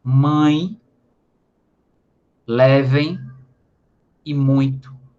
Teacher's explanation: o som que sai do nariz, ao pronunciar uma vogal nasal, aliás, um ditongo nasal